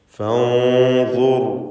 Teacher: ശേഷം ഇസ്തിഅലാഇന്റെ ഹർഫായതുകൊണ്ട് തഫ്ഖീം മണിക്കലിലും വേണം. ഫൻദുർ റാഇനും തഫ്ഖീം കൊടുക്കുക. റാഇന് സുക്കൂനും തൊട്ടു മുമ്പിൽ സ്ഥിരപ്പെട്ട ളമ്മും ഉണ്ട്.